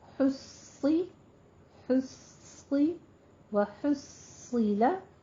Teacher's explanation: اور حصیلہ، ہا کے اوپر ضمہ ہے، صاد کو پر پڑھنا ہے، صاد کے اوپر تشدید بھی ہے تو اس کو سختی سے پہلا صاد ساکن، دوسرا پر پڑھنا ہے